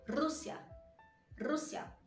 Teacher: quando ele está no começo da palavra ela tem esse som mais tremido e mais prolongado um pouquinho